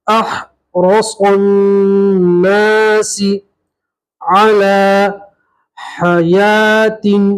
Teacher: الف اور لام نہیں پڑھیں گے، صاد کو سیدھا نون سے ملائیں گے